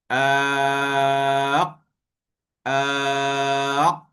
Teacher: Bila kita nak sebut huruf qaf tu, lidah kita, pangkal lidah kita menyentuh bahagian anak tekak.